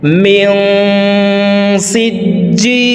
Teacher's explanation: পরে ইকফার 15টি হরফের ভিতর একটি হরফ সিন আসছে এই কারণে এই নুন সাকিনকে নাকের ভিতরে লুকাইয়া গুন্নার সহিত পড়ব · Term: ইকফা গুন্না